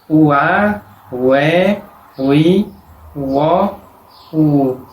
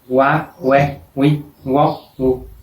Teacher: suena como una U separada de la otra vocal, no como una U superpuesta a la otra vocal.